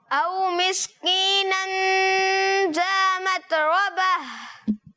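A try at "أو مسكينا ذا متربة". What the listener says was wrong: زال کی ادائیگی کلیئر کرنی ہے. ذا متربہ.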